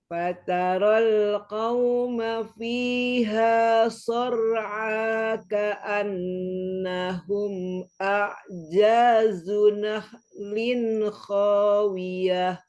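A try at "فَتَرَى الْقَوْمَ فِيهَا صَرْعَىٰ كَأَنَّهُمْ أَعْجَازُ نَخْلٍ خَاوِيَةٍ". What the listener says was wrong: Masya Allah, Mumtazah barakallah Umi.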